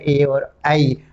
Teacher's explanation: ए ऐ कंठ और तालु, ये दोनों का सहारे से इन वर्णों का उच्चारण होता है। ए कंठ और तालु दोनों जगह इसका थोड़ा सा दबाव आता है, हवा का दबाव आता है, इसीलिए इन वर्णों को कंठ तालु उत्पत्ति स्थान होने के कारण कंठ तालव्य कहा गया।